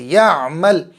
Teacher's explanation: عین نکالو، زبان اور گلے حلق کے بیچ والے حصے سے